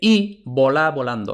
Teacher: Entonces vemos que nuevamente, aunque fuera B oclusiva, pero como ahora no va detrás de pausa, sino que va detrás de una I, entonces ahora ya no es oclusiva, sino que es aproximante.